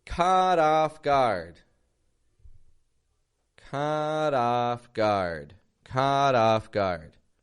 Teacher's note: Notice how the vowel sound in each one of those words, caught off guard, is the exact same. The same quality of sound, the same stress, and the same position.